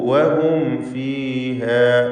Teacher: സക്കിനത്തായ മീമും ശേഷം ഫാവുമാണ്. ഇൽഹാർ ഷഫവി സൂക്ഷ്മതയോടെ ചെയ്തുകൊണ്ട്, അഥവാ ഫാ ഷഫവിയ അക്ഷരമായതുകൊണ്ട് മീം അവ്യക്തമാവാൻ സാധ്യതയുണ്ട്. നേരത്തെ സൂചിപ്പിച്ച പോലെ ഇപ്രകാരം മീമിന് ശേഷം സാക്കിനത്തായ മീമിന് ശേഷം ഫാവോ വാവോ വരുമ്പോൾ വ്യക്തമായി ഇൽഹാർ ചെയ്യണം.